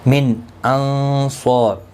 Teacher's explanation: نون ساکن کے بعد حروف حلقی کا حمزہ ہے، اظہار حلقی ہوگا، گنہ نہیں کریں گے